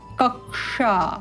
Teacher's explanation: इस क्ष का उच्चारण क और श